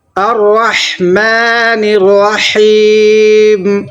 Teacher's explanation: الرحمن الرحیم، یہ بھی بڑی ہا ہے اور یہاں بھی بڑی ہا ہے، تو بڑی ہا ہمیں حلق سے نکالنا ہے